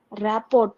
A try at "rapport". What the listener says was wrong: Okay, it is not pronounced as rapport. It is rapo. Rapo. RT is silent. Rapo.